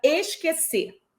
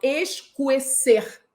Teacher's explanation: Afinal de contas, eu não pronuncio esse U. Eu não falo escuecer. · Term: dígrafo